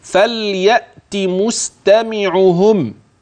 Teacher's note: اصل اللام سمعتها منك كده ساكنه وباينه قوي قوي وبركز عليها في النطق اه عشان دي اللام واضحه فليات مستمعهم